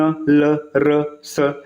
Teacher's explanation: वर्ष व्यंजन में भी ये जीभ जो है मसूड़ों को थोड़ा स्पर्श करते, जैसे न ल र स, है ना, मसूड़ों के थोड़ा सा ऊपर, मतलब ये सब हल्का फुल्का ना आसपास स्पर्श करेंगे।